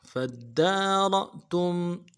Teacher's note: نفسا فدارأتم فا کو دال کے ساتھ ملانا ہے، دال کے اوپر تشدید زور دیں گے، دال کے اوپر کھڑا زبر ہے، ایک الف دال میں کھینچیں گے، را کو حمزہ کے ساتھ ملانا ہے، را کو موٹا کریں گے، حمزہ پہ جھٹکا دیں گے، حمزہ جب ساکن ہو تو جھٹکا دیں گے، تا کو میم ساکن کے ساتھ ملانا ہے، میم ساکن میں غنہ کریں گے۔